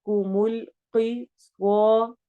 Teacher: قاف بھی موٹا ہے، صاد بھی موٹا ہے، ہم نے ان کو موٹا بھی کرنا ہے اور الف مدہ بھی بیچ میں کرنی ہے